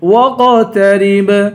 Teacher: آخر میں با ہے، با حروف قلقلہ ہے، یہاں پر قلقلہ کریں گے